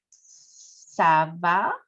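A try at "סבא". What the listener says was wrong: I think you said Sava, which is right.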